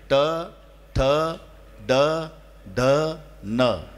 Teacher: मूर्धन्य म्हणजे टाळूलाही लागत नाही दातालाही लागत नाही